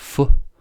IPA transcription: f